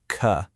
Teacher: Have them pay attention to how it's formed at the very back of their mouths, right near the throat. You can explain that it sounds literally identical to the K sound. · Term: hard C sound